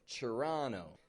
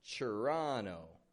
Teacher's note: the T-O-R is becoming a chur sound. Not a Toronto, but a chur, Toronto.